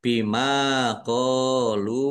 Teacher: Lam dzumah wawu sukun juga mad thobi'i. Masing-masing dibaca panjang dua harakat.